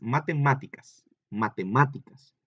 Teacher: Pero vean que se escucha muy fuerte en la sílaba ma, ahí es donde lleva el acento